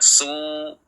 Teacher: Jangan su, antara u dan o, tetapi jelas u-nya.